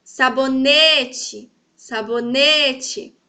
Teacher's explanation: Viram que o ne está em evidência? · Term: sílaba tônica